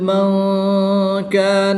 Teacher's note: نون ساکن کے بعد حرف اخفا میں سے کاف آ رہا ہے تو یہاں پر اخفا ہوگا یعنی غنہ کر کے پڑھیں گے۔